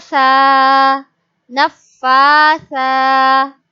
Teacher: Standing Fatha is a long vowel. So we stretch it.